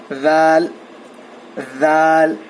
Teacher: ذال کا مخرج ہے زبان کی نوک کو سامنے کے 2 دانتوں کے کناروں کو لگانے سے ذال ادا ہوتا ہے